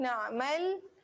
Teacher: ain yang bertanda sukun. Tekan dekat tengah kerongkong.